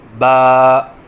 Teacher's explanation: حرف ہے با، مخرج با دونوں ہونٹوں کی تری سے ادا ہوتا ہے، یعنی دونوں ہونٹوں کی تری کے ملنے سے با ادا ہوتا ہے